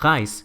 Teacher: si la R está antes de la vocal, adopta este sonido como gutural que me recuerda al francés y al alemán